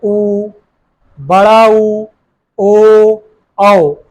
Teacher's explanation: ऐसे स्वर जिनको या जिनका उच्चारण करने पर ओष्ठ की आकृति गोलाकार हो जाए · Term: वृत्ताकार स्वर